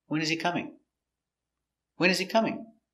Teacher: Intonation goes down at the end. It's an information question.